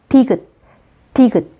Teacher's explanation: 디귿을 발음하기 위해선 혀 끝이 윗잇몸 뒤쪽에 닿으면서 소리를 막았다가 터뜨립니다.